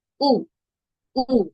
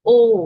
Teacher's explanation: যখন আমরা উ উচ্চারণ করি তখন মুখটা খানিকটা চ্যাপ্টা করে আমরা উচ্চারণ করব। আর যখন ও উচ্চারণ করব পুরোপুরি গোল করে উচ্চারণ করব।